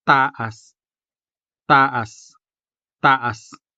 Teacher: The native Hiligaynon consonant ta is never aspirated, as in the English words table and talk. Rather, it is always a hard, if not impactful, ta, as in taas, meaning tall or high.